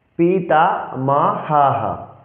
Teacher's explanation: সেক্ষেত্রে আমরা বিসর্গের জন্য হ উচ্চারণ করব